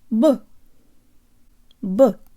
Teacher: simple tell your brain the Oh sounds like a schwa and the whole syllable is shorter than any English syllables